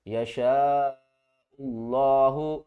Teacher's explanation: حمزہ کو ہم لفظ اللہ کے دوسرے لام سے ملائیں گے، یہ الف اور یہ لام چھوڑ دیں گے